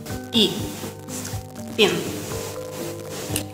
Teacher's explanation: Дальше звук «и». Он короткий, отрывистый и напряженный. В отличие от русского «и», английский «и» произносится почти без улыбки. Этакая Мона Лиза.